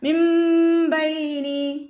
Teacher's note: മിൻ ബൈനി, ഇവിടെ നൂൻ സാക്കിനയുടെ നിയമമായിട്ടുള്ള ഇഖ്ലാബാണ് വരുന്നത്. നൂൻ സാക്കിനയ്ക്ക് ശേഷം ബ എന്ന അക്ഷരം വന്നതുകൊണ്ട് നൂൻ സാക്കിനെ നമ്മൾ മീമാക്കി മാറ്റി മറിച്ചിട്ട് ഉണ്ണയോടുകൂടി ഉച്ചരിക്കുക.